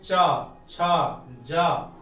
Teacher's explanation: बिना तालु में सटे हम इस सब वर्ण का प्रोनाउंसिएशन मतलब उच्चारण नहीं कर पाएंगे